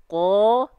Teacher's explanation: kalau qaf itu pangkal lidahnya nempel ke langit-langit yang paling dalam, alias langit-langit yang lunak. Kalau kaf dia agak ke tengah, gitu.